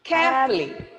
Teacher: Here the O sound after F is eliminated.